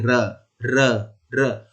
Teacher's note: जो ऊपर वाले जो दांत हैं उनके जड़ पे छू के आ रहा है र बोलने में, तो हमारी जीभ इसके जड़ को छूती है, इसीलिए इसे दंत मूल कहा जाता है।